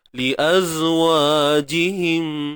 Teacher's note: Sekali lagi huruf zai. Okey, jaga sifat rakhawah iaitu suara yang mengalir.